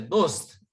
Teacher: शेवटचं जे अक्षर आहे ते हलंत असतं बहुतेक उर्दूमध्ये, त्याचा उच्चार अर्धाच केला जातो. तर इथे हा त पण अर्धाच आहे, दोस्त एवढंच म्हणतात.